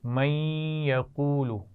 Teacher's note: نون ساکن کے بعد یا آ گئی ہے تو یہاں غنہ ہوگا